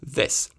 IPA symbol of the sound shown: ð